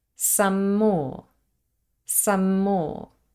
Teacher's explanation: the same nasal sound M let's listen some more some more here we have gemination the m is slightly longer · We have the word some ending in the nasal m, and the word more starting with the same nasal sound m.